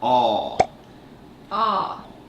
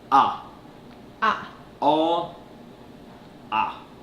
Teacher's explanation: there's a short and long pronunciation of it the long one is aa aa and the short one is ah